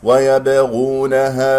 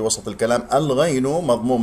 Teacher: باء مقلقلة قلقلة صغرى في وسط الكلام. الغين مضموم، نضم الشفتين فيها، مفخم مرتبة ثالثة مرتبة المضموم.